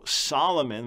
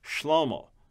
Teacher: we end up with an S instead of an SH